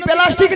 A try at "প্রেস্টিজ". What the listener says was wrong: বলি মাসি, ওটা প্লাস্টিক হবে নি, বলো প্রেস্টিজ। ঠিক করে বলো, ভুল হয়েছে বলো প্রেস্টিজ। ভুল হয়ে গেছে ঠিক করে বলো।